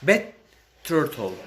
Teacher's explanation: Here we have two T's that are together. We just connect them.